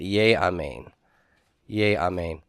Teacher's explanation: So I need to go from a short I class to a long I class by way of compensatory lengthening.